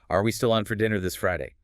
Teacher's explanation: The pitch goes noticeably up on Friday. · That rising pitch at the end is a key signal that you're asking, not telling. · Because it's a yes no question. The source notes the intonation does the opposite of a statement. It rises at the end. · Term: rising question intonation